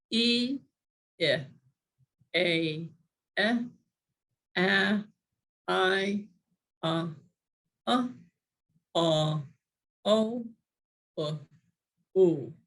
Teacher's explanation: it went from a smiling e to a totally open ah to a purse ooh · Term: vowel circle